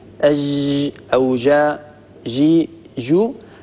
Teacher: هذه جيم رخوة لأن الصوت يجري بها، وهي جيم مهموسة لأن النفس والهواء يمر، ولكنها ليست الجيم الفصيحة المنقولة إلينا.